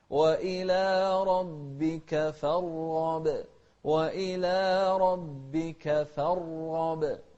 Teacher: الراء مفخمة والغين مفخمة، لكن الغين أكثر تفخيما لأنها مفتوحة، والراء ساكنة فهي أقل منها تفخيما